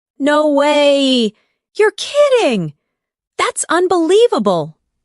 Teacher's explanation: Feel the rise in your voice when you express surprise.